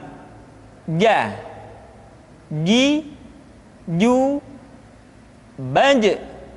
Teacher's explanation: Dikeluarkan dengan menyentuhkan tengah-tengah lidah dengan langit-langit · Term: huruf ja